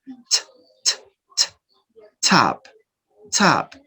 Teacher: Aspiration. So it is indicating that the sound ta is produced with aspiration. T, t. You release the air.